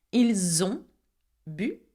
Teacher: I do the liaison between ils ont, elles ont